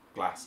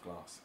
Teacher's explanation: One of the most obvious differences with a Birmingham accent from our accent is the short A sound rather than long A. So past instead of past, or glass instead of glass.